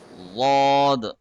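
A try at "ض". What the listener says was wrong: make it a more softer don't touch the tongue too hard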